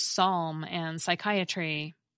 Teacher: Greek borrowings that begin with these clusters get simplified by losing that first consonant.